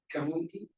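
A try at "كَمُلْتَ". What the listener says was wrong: Close, right above it. Not anti, but anta.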